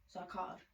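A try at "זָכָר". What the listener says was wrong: Because you have to remember zakad, because it's a resh at the end. It's not a dalet. Okay, but that's not what you're saying.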